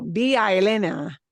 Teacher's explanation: I've got 3 vowels that all hook together. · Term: slide together